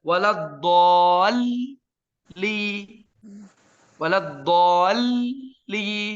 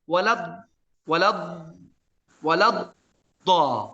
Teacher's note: Gabung dalam satu makhraj yang kita sebutkan idgham.